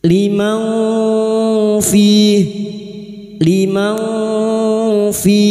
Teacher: Nun sukun atau tanwin yang bertemu dengan salah satu dari huruf 15 ini termasuk huruf fa, ikhfa hakiki. Nun sukun dibaca samar dan mendengung selama 3 harokat.